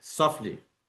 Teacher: You don't pronounce a T between F and L. It's always softly, not stop softly.